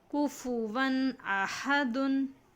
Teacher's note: ادھر دیکھیے یہ اس سینٹنس میں تنوین ہے. تو تنوین کے بعد حروف حلقی کے 6 لیٹرز میں سے حمزہ ہے، اس لیے اس کو ہمیں ظاہر کر کے پڑھنا چاہیے بلا غننے کے، اس کو اظہار کہتے ہیں